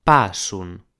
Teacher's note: with an A that is pronounced like an O